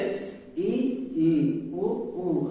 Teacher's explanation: संवृत, संवृत मतलब जब मुख पूरा बंद रहे और वर्णों को हम बोल ले, जैसे ई, उ। हमारा मुख जो है पूरा नहीं खुला ना, बहुत बहुत हल्का सा खुला